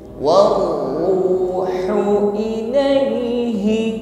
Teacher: kebetulan di sini adalah ra tafkhim, bunyinya tebal.